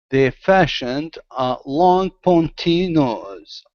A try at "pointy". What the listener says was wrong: Okay, almost. Instead of ponty, poi, pointy.